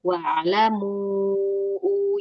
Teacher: Jadi pas u itu udah enggak ada suara di hidung. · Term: huruf mad